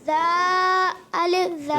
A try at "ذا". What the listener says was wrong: ذا نہیں ذال. حرف کیا ہے؟ ذال. پورا حرف پڑھیں گے. ذال الف زبر ذا.